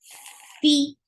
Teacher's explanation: Fi with hams, give kasra, and kasra is very short. The sound is E.